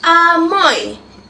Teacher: Bunyi o lebih nyaring daripada bunyi i. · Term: diftong